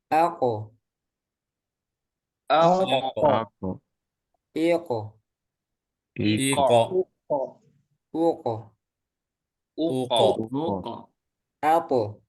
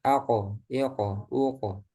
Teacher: Jadi nanti harus lebih jelas lagi mantulnya. Kalau qof mantulnya aqo iqo uqo tebal